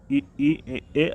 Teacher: जिह्वा की उच्चारण या स्थिति के आधार पर अग्रस्वर हमारे ई, ए आते हैं